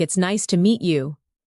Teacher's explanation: When you listen to sentences like, "It's nice to meet you." Notice the rise and fall of the tone. The voice goes up slightly at nice and falls gently at you.